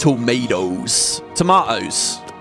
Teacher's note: You got to do the glottal stop. Don't pronounce that T. Just gloss over it. And definitely don't pronounce it as a D.